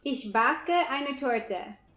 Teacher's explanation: Everything was a little bit more wavy and melodious. The words stick together a bit more, while Germans make little breaks actually.